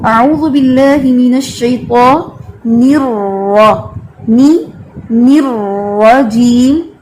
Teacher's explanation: توسط ہونے کی وجہ سے را میں تھوڑا آپ اس پر ٹائم لگاتے ہیں، جلدی نہیں پڑھتے